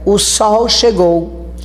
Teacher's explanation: este O tem uma sílaba, mas ele não tem força, ele é átono